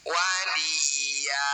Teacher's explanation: Bunyi fathah tanwin kita ganti jadi fathah panjang. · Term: mad iwad